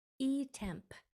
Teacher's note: make sure your lips stay together on that m and the P has no voice it's not P it's just a puff of air P so